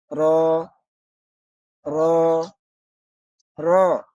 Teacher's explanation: জিহ্বার আগার পিঠ তার বরাবর উপরের তালুর সঙ্গে লাগাইয়া র হরফ উচ্চারিত হয়।